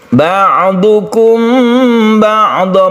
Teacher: mim mati bertemu dengan ba disebut ikhfa syafawi, kita panjangkan ketika kita membaca mim mati tersebut. Ba'dha ini adalah mat iwad, kita berhenti karena tanda wakafnya ini lebih baik berhenti.